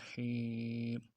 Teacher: میم پیش مو، حا یا زیر حی، یا مدہ ہے، ایک الف دال میں کھینچنا ہے